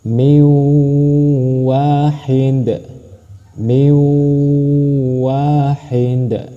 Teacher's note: nun mati bertemu dengan wau berarti dibaca masuk dengan dengung ditekan dan ditahan dua harakat · Idgham bi gunnah masuk dengan dengung dan ditahan 2 harokat.